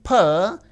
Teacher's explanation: if you take the phoneme p, it is voiceless and bilabial, plosive.